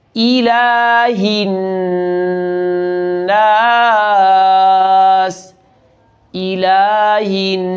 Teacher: حمزہ کی زیر کو معروف پڑھنا ہے